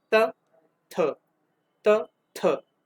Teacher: लेकिन त था में आपके गर्दन पे कोई कंपन उत्पन्न नहीं होएगा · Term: अघोष